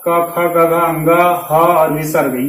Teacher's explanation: ये कहां से उच्चारित होते हैं, तो कंठ से होते हैं